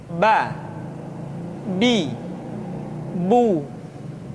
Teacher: Huruf Ba dikeluarkan dengan cara merapatkan kedua bibir kita.